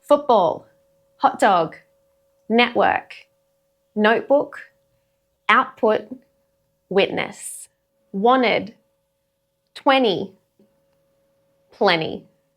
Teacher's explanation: So you're not cutting the t out completely. It is a brief compression in the throat, replacing the tongue click of a regular t.